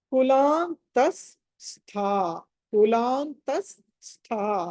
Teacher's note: విసర్గ తర్వాత స వస్తే గనుక ఇంకొక స పలకాలి · ఇప్పుడు స ష క్ష ఈ 3 సకారాలు ఈ 3 కనుక వస్తే ఎలా చదవాలంటే విసర్గ తర్వాత స వస్తే కనుక ఇంకొక స పలకాలి. విసర్గ తర్వాత స వస్తే ఇంకొక స పలకాలి · సో త ఎండ్ చేసినప్పుడు విసర్గ పలకకుండా విసర్గ స్థానంలో స పలకాలి.